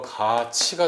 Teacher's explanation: 그 그 다음에 가티가 아니고 가치가 되죠. 자, 그래서 디귿이 이를 만나서 지읒으로 바뀌고 티읕이 이를 만나서 치읒으로 바뀌는 거, 이런 게 바로 국외음화입니다.